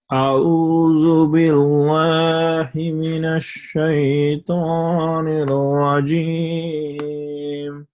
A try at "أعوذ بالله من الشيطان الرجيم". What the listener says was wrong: Good. But you cannot say billahi.